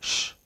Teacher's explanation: Yeah, lips are a little rounded. · In case of sh, tongue rolls backwards.